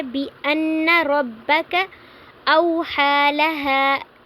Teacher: بِأَنَّ رَبَّكَ أَوْحَى لَهَا، بِأَنَّا نہیں پڑھنا، ہم نے بِأَنَّ پڑھنا ہے، نون مشدد ہے تو یہاں پہ غنہ ہو رہا ہے۔